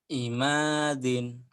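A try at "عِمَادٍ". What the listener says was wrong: Imadin, nggak ada yang panjang. Imadin.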